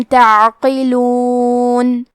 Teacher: کلمت تعقلون میں عین ساکن کو ظاہر کریں گے اور حرف القاف کو موٹی آواز میں پڑھیں گے